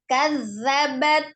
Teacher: dia diucapkan dengan jelas, tidak ada hembusan nafas yang mengalir ketika mengucapkan huruf dzal. Hati-hati jangan salah makhrajnya, ujung lidah harus bertemu dengan ujung gigi seri bagian atas ya.